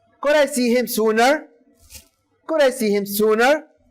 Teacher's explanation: It's a question. So the intonation goes rising.